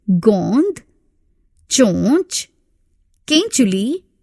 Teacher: अनुनासिक वे स्वर हैं जिनके उच्चारण में वायु मुख के साथ साथ नाक से भी बाहर निकलती है